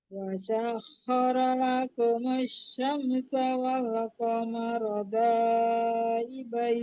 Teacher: Mau berhenti itu ibain, jangan ibaini ya. Itu kan ada wakaf jais gitu atau wakaf jim wal qamara daibain, dimatikan nunnya.